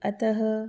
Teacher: विसर्ग का चिन्ह वर्ण के बाद आता है। उच्चारण करते समय हल्की ह की ध्वनि निकलती है।